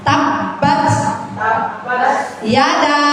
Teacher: Karena di situ ada mad jaiz munfasil ya, Bu. Jaiz munfasil panjangnya lima harakat ya, Bu ya.